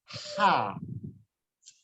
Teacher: lebih banyak angin yang keluar, lebih tipis, lebih bersih. Ha.